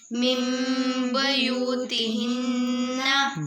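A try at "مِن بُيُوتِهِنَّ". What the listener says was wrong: बा के ऊपर पेश है, बू पढ़ना है, बा नहीं पढ़ना।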